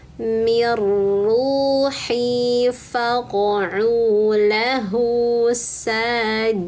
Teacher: idgham artinya nun sukunnya tidak dibaca teman-teman karena itu langsung ke huruf ro